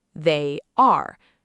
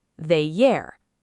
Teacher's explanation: stretch your lips into a smile, and push that invisible Y sound into the gap.